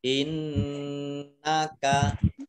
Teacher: Nun tasydid dibaca guna atau mendengung ditahan dua harokat